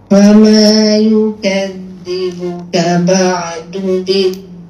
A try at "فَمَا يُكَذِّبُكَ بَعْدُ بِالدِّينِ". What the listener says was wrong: Dekat biddin jadi ba'du yuk. Kan dia kakak tengok balik latih ba'du du dia lagi bunyi du dia ada dentuman yang kuat itu tak jadi. Dia kena jangan bagi hilangkan dentuman supaya tak jadi macam tu.